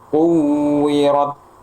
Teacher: Tahan dulu, syiddah dulu, suaranya tertahan, kemudian alirkan secukupnya nafasnya.